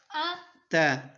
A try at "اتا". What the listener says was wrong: تا کو کیوں لمبا کر دیا؟ ہر بار کوئی نہ غلطی کرتے. اتا